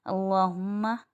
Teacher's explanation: میم مشدد آ رہا ہے، ایک الف کی مقدار غنہ کریں گے